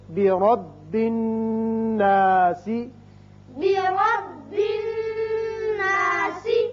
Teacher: یہاں را کے اوپر زبر ہے. جب را پہ کے اوپر زبر ہو تو اس کو پر پڑھتے ہیں، منہ بھر کے پڑھتے ہیں · اب یہاں نون دیکھیے کہ نون کے اوپر شد ہے. نون حرف مشدد ہے اور حرف غنہ ہے. یہاں غنہ کریں گے. نون کے اوپر جب بھی شد آ جائے تو غنہ کرتے ہیں.